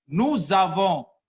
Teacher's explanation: Nous ends in S, and avons begins with A, so zavons. The S in between the two vowels U and A, so it changes to the sound Z. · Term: liaison